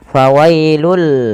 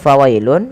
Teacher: Fawailul, ya, awalnya fawailun, karena bertemu dengan huruf lam maka tanwinnya dimasukkan ke huruf lam dan diganti dengan huruf lam. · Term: idgham